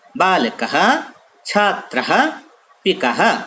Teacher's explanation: विसर्ग का उच्चारण हा की भांति होता है